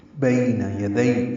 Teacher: بی اور دئی دونوں یائلین ہیں، نرمی سے پڑھیں گے